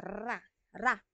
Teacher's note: pag gilagid din siya kasi yung dila natin is nasa taas ng gilagid natin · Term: pakatal